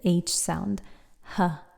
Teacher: And that's almost as far back as it goes until way down in the lower throat, we have the H sound, h. But the upper throat is not touched at all in our speech in English.